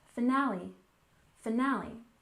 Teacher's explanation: finale stress the second syllable